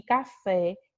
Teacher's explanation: são palavras oxítonas, porque a última sílaba é a sílaba mais forte da palavra.